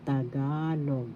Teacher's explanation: First syllable ta, second syllable ga, third syllable log. The accent is in the second syllable.